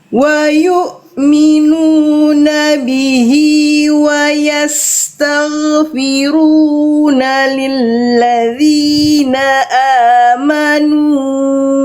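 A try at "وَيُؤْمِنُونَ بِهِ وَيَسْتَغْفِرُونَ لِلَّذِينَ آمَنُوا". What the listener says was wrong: Eh nunnya bablas. Berapa harakat nnya Bunda?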